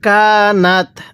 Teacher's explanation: কানাত নুনের মধ্যে গুন্নাহ করবো